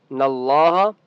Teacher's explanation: ان نون کے اوپر تشدید ہے غنہ کریں گے. ان اللہ لفظ اللہ کا نام موٹا ہوگا کیونکہ اس سے پہلے نون کے اوپر زبر ہے.